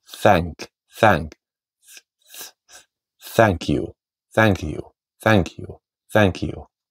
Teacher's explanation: Sitten soinniton th-äänne on se, että ilma pääsee tulemaan, mutta kieli on siellä hambaiden välissä.